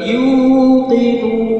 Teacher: Panjang, yu dua harakat, nun itu boleh dua, maksimalnya 6 harokat.